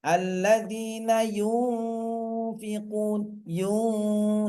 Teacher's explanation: harus berdengung dulu, harus keluar dari hidung dulu ya. Baru baru diucapkan berikutnya. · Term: Ikhfa